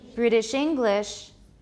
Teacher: so it should be british is a noun or an adjective it's an adjective so we say british english english is stressed